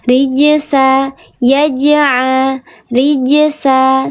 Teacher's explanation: qalqalah sugra dibacanya dia natural saja dipantulkan